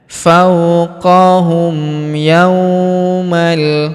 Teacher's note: huruf ya kita ayun sekali karena wau sukun di depannya